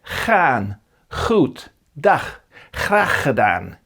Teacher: In northern parts of the Netherlands, this is pronounced [g] or [x],